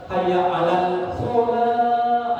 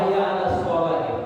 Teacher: Nah kalau hayya 'alas shalah itu lamnya, alif lamnya itu tidak dibaca. Kenapa? Karena itu langsung masuk ke shad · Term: Asyamsiyah